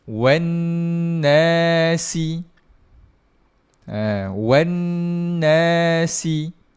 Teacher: Ketika sambung, bunyi dia kita akan dengungkan juga 2 harakat.